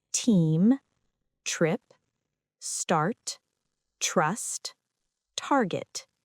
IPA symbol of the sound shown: t